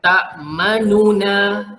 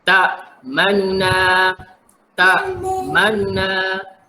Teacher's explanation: Bila kita nak buat bunyi raum, sekejap saja bunyi baris depan tu. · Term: hukum raum